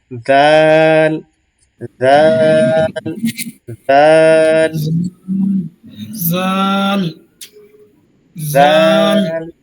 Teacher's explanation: দাঁতের মাঝখান থেকে সা বলেছি ঠিক সেখান থেকেই জাল উচ্চারণ হবে জাল দুই দাঁতের মাঝখান থেকে জিহবা সামনে বের হয়ে আসবে পাতলা করে